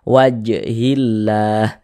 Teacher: tanda baca kasrah ada lafaz Allah sebelum sebumnya ada harakat kasrah maka lafaz Allahnya dibaca tarqik Dibaca tipis